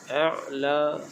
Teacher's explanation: Rabbikal a'la di sini ada bertemu dengan huruf ain. Ain makhrajnya adalah di bahagian tengah kerongkong. A'la, jadi pastikan bunyi ain ini keluar di bahagian tengah kerongkong.